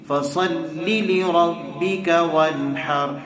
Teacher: فصل لے پڑھ رہے ہیں لوگ، لے نہیں ہے لی